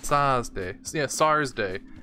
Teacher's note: But the kids always spell it S-A-R-S-D-A-Y, Saturday, because there's no TH sound in Japanese, so it's Sa.